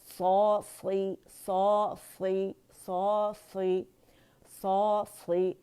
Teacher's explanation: اس میں اتباق ہے, زبان تالو سے لپٹ جاتی ہے تو یہ کسرہ کے ساتھ بھی موٹا ہی پڑھا جائے گا